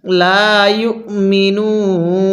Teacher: এরপরে বাল আকসারুহুম লা ইউমিনুন, অনেকেই শব্দটাকে ইউমিনুন পড়ি, এখানে হামজাটিকে বাদ দিয়ে দেই। এখানে হামজাটিকে ধরব, ওয়াওটিকে বাদ দিব